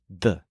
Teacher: in Spanish the tongue is against the teeth